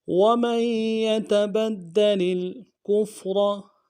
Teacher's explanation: کے ساتھ ملانا ہے، فا کو نرم سے ادا کریں گے، اور را کو موٹا ادا کرنا ہے